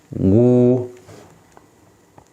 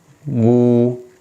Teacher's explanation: Jadi huruf dhammah itu harus dimanyungkan sehingga bibir yang depan itu membentuk ibaratnya lingkaran, sebuah lingkaran gitu.